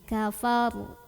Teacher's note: Karena huruf sebelumnya adalah berbaris di atas fathah, maka ra-nya tafkhim atau tebal ya. Jadi naikkan pangkal lidahnya.